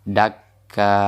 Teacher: Jadi tidak kita baca dakkan lagi karena ini sudah kita wakaf, maka kita iwatkan, kita gantikan tanwin ini menjadi mad. Dakka, seperti itu.